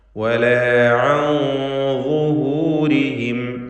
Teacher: ഇവിടെ സാക്കിനത്ത നൂനിന് ശേഷം വാ വന്നതുകൊണ്ട് ഇഖ്ഫാ ഹഖീഖി നൽകി മറച്ച് മണിച്ചുച്ചരിക്കണം. മണിക്കലിൽ തഫ്ഖീം വേണം, കാരണം വാ തഫ്ഖീം ചെയ്ത് ഉച്ചരിക്കേണ്ട അക്ഷരമാണ് എന്നതുകൊണ്ട് നൂനിൻ്റെ മണിക്കലിലും തഫ്ഖീം ഉണ്ടായിരിക്കും.